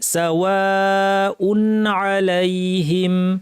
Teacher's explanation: সাওয়া উন, এখানে আমরা দেখতে পাচ্ছি তানউইনের পর আইন আছে, ইজহার করতে হবে, অর্থাৎ তানউইনটাকে, তানউইন বেসিক্যালি নুন সাকিন, একে স্বাভাবিকভাবে গুন্না না বাড়িয়ে পড়তে হবে